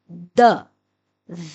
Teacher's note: دال زبان کو تالو کے ساتھ لگانے سے ادا ہوتا ہے، آواز ہے د۔